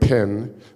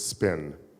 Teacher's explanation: there's no explosion of air